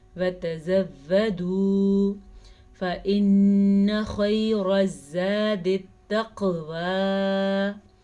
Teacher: نون کے اوپر شد ہے تو نون پہ غنہ کریں گے